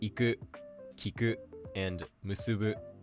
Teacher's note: The other pattern that verbs come in is heiban, meaning that they're just pronounced flat. Words like iku, kiku, and musubu use this pattern.